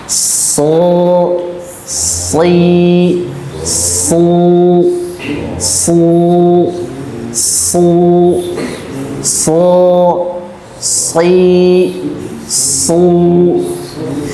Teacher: Huruf shad karena lebih mudah makhrajnya dari dua gigi seri kita. Ya, tapi suaranya dibuang ke langit-langit, tertahan. Ya, suara dibuang ke langit-langit seperti huruf bot, ya.